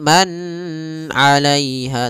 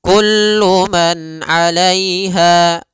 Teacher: Ain itu termasuk huruf tenggorokan maka nunnya jelas Kullu Man alaiha dan nunnya tidak boleh ditahan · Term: izhar halqi